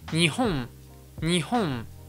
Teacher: le N japonais, ça se prononce la bouche fermée, alors que nous, en français, on va garder la bouche ouverte. En français, on va vraiment faire un mélange entre les deux sons pour donner un son qui est complètement nouveau, comme par exemple on, on, alors que en japonais, on a vraiment la voyelle puis le son m.